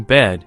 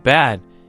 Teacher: The difference between bed and bad is a tiny shift in jaw openness.